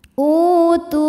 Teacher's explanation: adalah mad badal karena ada Hamzah yang dipanjangkan ini hamzahnya ya Hamzah berbaris damah ketemu wau sukun maka huruf ini kita panjangkan dua harakat